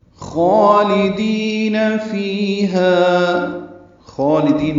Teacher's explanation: خالدین میں خواہ کو پر پڑھیں گے، 2 حرکات لمبا کریں گے، لام باریک ادا کریں گے، دال بھی باریک پڑھیں گے، دی یا مدہ ہے، یہ دال کو لمبا کرنا ہے 2 حرکات، فیہا میں یا مدہ اور الف مدہ ہیں، یہ بھی 2 حرکات لمبا کریں گے۔